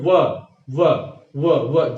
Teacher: जो वकार होता है वो दंत और ओष्ठ से बोला जाता है। और अगर आप कहें व व जिह्वा कहीं नहीं छू रही है, ये अर्धस्वर भी इसीलिए कहे जाते हैं कि जिह्वा कहीं भी स्पर्श नहीं करती है, लेकिन जो और हवा जो है अबाध रूप से बाहर निकलती है, इसीलिए इन्हें अर्धस्वर कहा जाता है। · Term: दंत्योष्ठ